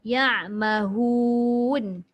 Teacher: Waw tak masuk pun dekat hidung.